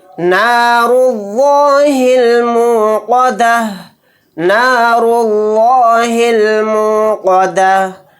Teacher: इस लफ्ज़ अल्लाह के लाम को मोटा यानी पुर पढ़ेंगे, क्योंकि लफ्ज़ अल्लाह के लाम से पहले पेश है